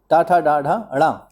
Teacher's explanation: मूर्धा जो है वो ट वर्ग का जो वर्ग है वो मूर्धा से होता है, यानी ट, ठ, ड, ढ और या।